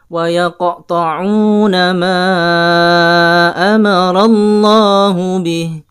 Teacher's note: seakan-akan ada hamzah sukun di akhir yang sangat terdengar jelas